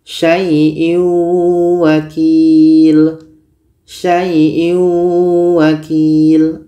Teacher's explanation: Tanwin ini kita masukkan ke waw tapi dia kurang sempurna masuknya. Maka dikategorikan dalam idgham naqish.